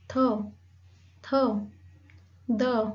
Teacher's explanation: and sound produce like थ द, ये जो साउंड है थ द, तो इसमें जो आपकी जो टंग है, टंग का जो आपका टिप ऑफ द टंग है, जो फ्रंट पार्ट है, that touch to your teeth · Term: डेंटल साउंड